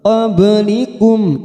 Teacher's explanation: Ba sukun kita pantulkan qalqalah sugroh karena mati asli di tengah kalimat